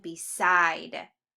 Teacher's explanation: Hear that I sound is nice and accented in the second syllable.